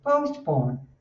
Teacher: Você não fala po, você faz o som com schwa, que é mais suave.